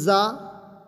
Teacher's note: زا کو جھنجھناٹ کی آواز سے ہم نے پڑھا تھا اور ہجے کرنے میں منہ کھولے تھے، جیسے زا تو ہم پڑھیں گے زا زبر ز۔